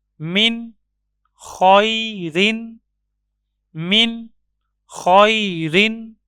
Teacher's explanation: نون ساکن کے بعد حرف حلقی میں سے خا موجود ہے، نون کو ظاہر کر کے پڑھیں گے